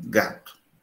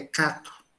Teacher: Você pronunciar uma oclusiva velar vozeada ou sonora não é fácil. Então, esse fonema G é extremamente difícil.